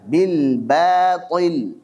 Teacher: Jadi yang harus dibaca tipis adalah huruf ba, jangan dibaca tebal.